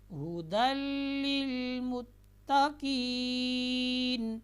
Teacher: تنوین کو ہم نے لام کے ساتھ ملانا ہے، لیکن ایسا ملانا ہے کہ اس میں ہم نے غنہ نہیں کرنا، بغیر غنہ کے پڑھیں گے.